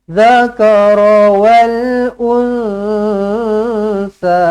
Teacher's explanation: Nun kosong bertemu dengan sa, ikhfa hakiki, dengungkan dengan dua harakat.